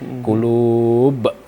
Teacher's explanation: Kalau hukumnya mad arid lisukun, kemudian qulub itu mad namanya qalqalah kubro. Matinya tidak mati asli karena dia berhenti, maka huruf qalqalahnya dipantulkan di akhir.